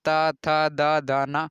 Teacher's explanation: जीभ हमेशा दांत में सट जाएगी